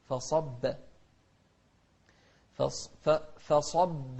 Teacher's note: فصب صاد مفخمة والباء مرققة